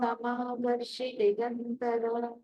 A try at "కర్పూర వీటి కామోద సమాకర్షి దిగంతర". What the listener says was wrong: మీరు ఏం చేస్తున్నారంటే ఒక చోట స్లో, ఒక చోట ఫాస్ట్, ఇట్లా అలా అన్ని ఎంత దీర్ఘం ఉన్నా ఏమున్నా ఆ టెంపో అంటే స్పీడ్ ఎంత ఉంటుందో అది ఉండాలి.